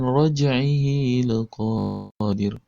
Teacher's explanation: Ini raj'ihi huruf jim sukun, maka dibaca qalqalah sughra. Laqadir, kemudian ada qa-nya panjang 2 harakat.